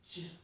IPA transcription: dʒ